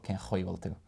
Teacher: because you've got a CH beside an A, which would be like a broad CH sound